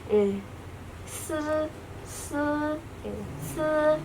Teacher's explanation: Jadi untuk mengucapkan shangmu se itu mirip mengucapkan S seperti pada umumnya. Jadi ujung lidah itu ditabrakin ke gigi atas.